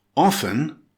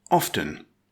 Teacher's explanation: Some grammarians insist the T is silent, as in soften. Others pronounce the T, as in after. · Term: silent T